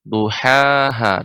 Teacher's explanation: Terakhir pada kata duhaha. Di sini ha yang pertama, ha bagian tengah tenggorokan, ha yang kedua itu bagian ya pangkal atau bagian tenggorokan bagian bawah